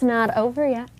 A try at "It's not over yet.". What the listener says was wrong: So over yet is not one word.